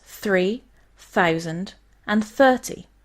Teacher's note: these are dental fricatives sounded out by placing your tongue between your upper and lower teeth